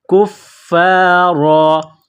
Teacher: فا مشدد ہے تو فا میں سختی کرنی ہے، فا کو دبانا ہے۔ کفارا، را کے اوپر دو زبر تنوین ہے، جب یہاں پر وقف کریں گے، سٹاپ کریں گے تو دو زبر کی تنوین کو الف سے تبدیل کریں گے۔